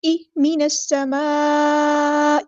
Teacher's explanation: مد متصل کنیکٹڈ مد ہے، 4 یا 5 کاؤنٹ ہم نے اس کو لمبا کرنا ہے ، ای من السماء، حمزہ کی آواز کو واضح ادا کرنا